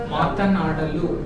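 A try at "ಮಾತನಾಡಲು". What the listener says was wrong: Actually, you can put one more A after. You can say NAA. Matanadalu.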